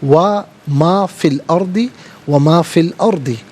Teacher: فی السماواتی اور فی الارض میں آپ دیکھیں کہ فا کے بعد فا کے نیچے زیر ہے فی السماواتی، اور السماواتی کی سین ہے تو فا کے نیچے زیر ہے، اسے السماواتی کی سین کے ساتھ ملائیں گے، اور آگے فی الارض میں فا کے نیچے زیر، اسے الارض کی لام ساکن کے ساتھ ملائیں گے · دونوں مقامات میں درمیان میں سے الف یعنی حمزہ کو حذف کیا جائے گا۔